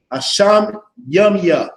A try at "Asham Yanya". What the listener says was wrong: Yanya. So no, that's an N.